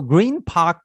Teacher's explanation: तो यहाँ पे आप देखते हैं एन एंस, ओके, तो N from the end of the word changes to M